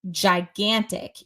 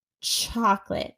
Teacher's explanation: when you say gigantic you need to use your voice versus CH chocolate doesn't use the voice · j is voiced. So, for example, when you say gigantic, you need to use your voice versus chocolate doesn't use the voice. But in terms of the articulation, it can be very complicated because when you're talking about ch, it's like you're doing sh, but you need to add kind of a T before it.